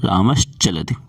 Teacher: अब शा के बाद चा आ रहा, तो यहाँ पे स्तोश्चुनाश्चु सूत्र लग गया। ये कहता है दंत सकार के बाद यदि तालव्य सकार या च वर्ग आए तो दंत सकार का तालव्य सकार हो जाए